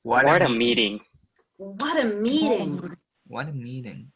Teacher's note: So you're going to stretch out the E in meeting more.